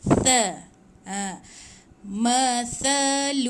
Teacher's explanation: kalau kita bunyi macam sa, sin, dia macam berdesir. Tapi dia tak berdesir. Dia kena tha. Hujung lidah di antara 2 gigi. Dia macam tumpul bunyi dia sikit.